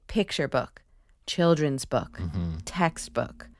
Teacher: us describe the kind of book it is so if it's a picture book or a children's book we stress that first part